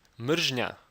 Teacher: a nasal drill combination in the word marina which means hate the bilabial nasal is being combined with the alveolar trill